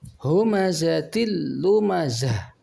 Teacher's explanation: Ketika dibaca mati maka dibunyikan dengan suara ha besar, dengan suara nafas yang besar, atau suara angin keluar dari tenggorok dengan besar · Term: tak marfutoh